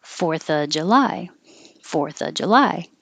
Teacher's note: when you're making it more casual, you can drop the V and it changes to um, before a consonant after it.